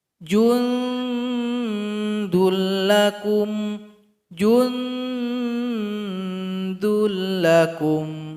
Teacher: huruf Dal tempat keluarnya ujung lidah menempel dengan belakang gigi seri paling atas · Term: ikhfa